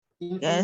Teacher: you have the stress on the penultimate syllable, which is may